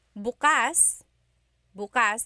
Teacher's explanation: the emphasis is on the second syllable. That means open.